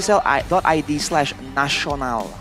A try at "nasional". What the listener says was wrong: With an S, by the way. Nasi Onal.